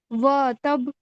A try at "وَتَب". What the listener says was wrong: وا کھینچنا نہیں ہے. دوبارہ پڑھیے.